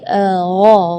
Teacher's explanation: Di ayat ini yang pertama di makhraj huruf ghain ya, ghairil maghdubi ya, perlu diperhatikan bukan G, bukan huruf G ya, bukan ga, tapi gha. Jadi kalau ga itu dia makhrajnya dari lidah. Ya, tapi kalau huruf ghain itu dari bagian tenggorokan ya. Jadi gha.